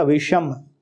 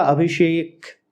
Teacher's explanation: जुड़ने के बाद दंत्य स जो है वो मूर्धन्य श में बदल जाता है